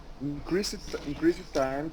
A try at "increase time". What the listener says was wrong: So let's eliminate the sound of the E. If you say increase, you are pronouncing the E. Because the sound of the T connects to the other T.